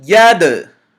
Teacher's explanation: This dal sukoon has to be bounced. Ya fatha dal sukoon yad. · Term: qalqalah letter